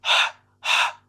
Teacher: You know, it's that type of airy, breathy, from the back of the throat exhaling H type sound · It's not heavy. It's not from the diaphragm. It's very airy. It's very breathy.